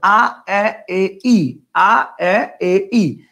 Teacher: এ আর একটু সামনে আসছে। আর যখন বলছেন ই, একদম সামনে চলে আসছে, একদম সামনে চলে আসছে।